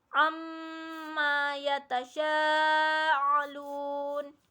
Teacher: mim bertasdid yaitu mendengungkan bunyi mim bertasdid